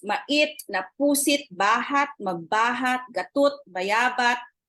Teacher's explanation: the dental stop t in Itawit is one of its notable feature. Unlike in Ibanag, which does not have the sound in the final position.